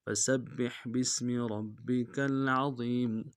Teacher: فسبح باسم ربک العظیم، فا کو نون سے ادا کریں گے، سین کو باریک ادا کرتے ہوئے با کے ساتھ ملانا ہے ، با کے اوپر تشدید و زور دیں گے، اور با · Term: سین کی سیٹی